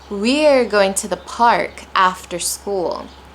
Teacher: I'm placing stress on after because it's a description for when what time of the day that this is going to take place.